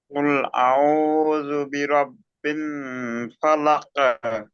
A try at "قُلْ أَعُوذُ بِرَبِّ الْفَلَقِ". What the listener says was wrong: বিন নয়, বালামজের বিল, বিল ফালাক।